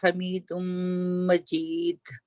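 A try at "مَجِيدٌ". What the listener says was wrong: مجید, آئند آپ کا ٹھیک ہے, مگر کبھی کبھی آپ ہارڈ کر لیتی ہیں, مطلب زبان زیادہ پیچھے لے جاتی ہیں.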